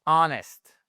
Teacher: Ici, le H, vous ne l'entendez pas, ça commence par un son voyelle